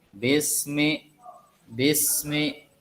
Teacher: tidak ada pantulan di kalimat bis karena huruf sin bukan huruf qalqalah